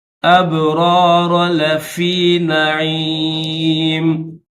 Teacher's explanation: ان الابرار، با حروف قلقلہ میں سے ہے تو اس کو ظاہر کریں گے، اس کے بعد 2 را ہے، دونوں را کو موٹا کریں گے